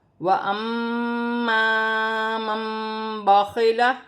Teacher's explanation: را کو موٹا بھی پڑھا جائے گا اور 1 الف کی مقدار کھینچ کر بھی پڑھا جائے گا، اور میم مشدد میں غنہ کیا جائے گا